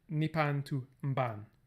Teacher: the vowel drops out and the nasal becomes homoorganic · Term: prenasalized stops